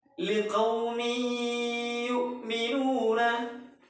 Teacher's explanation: kita meleburkan kasrah tanwin pada huruf ya. Liqaumi yu'minuna, kita meleburkan dan mendengungkannya. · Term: idgham bi gunnah